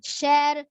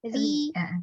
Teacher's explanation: Ya tebalnya kan syar. Ketika rinya tipis ri.